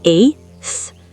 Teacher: 8 already ends in a T sound, so you just swap the T sound for a th sound.